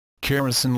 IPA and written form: kəˈriːsən (Keresan)